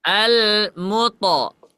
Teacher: qalqalahnya sughra karena dia di tengah-tengah kata. Ya, di tengah-tengah kalimat, ya. Jadi dia tidak terlalu ditekan.